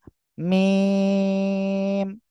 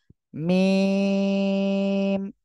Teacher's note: দুই ঠোঁটের বাইরের অংশ থেকে বা শুকনো জায়গা থেকে